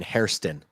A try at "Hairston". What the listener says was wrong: Hairston. You kept saying Harrison. Hairston. So it's a Hairston.